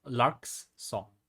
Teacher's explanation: The first line consists of one trochee, which goes stress and unstressed, lark's song.